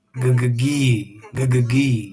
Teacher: So the tongue pulls back for the g, and then forward for the high e.